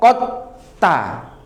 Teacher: kita berikan tasdid pada ta kita hilangkan dalnya. Jadi jadinya q ta ya qot ta. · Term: idgham